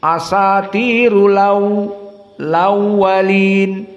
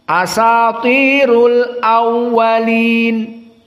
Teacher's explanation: Maka di sini hamzah dihilangkan, fathahnya dipindahkan ke yang sebelumnya yang sukun. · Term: naql